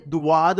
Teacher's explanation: دواد بولتے ہیں، واؤ کی آواز نکالتے ہیں، اس کو منہ کو گول کرتے ہیں. دواد نہیں ہے، یہ ہے ضاد.